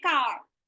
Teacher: There's a very, very soft touch of r. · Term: R controlled vowels